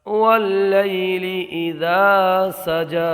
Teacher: یا لین بغیر کھینچے پڑھیں گے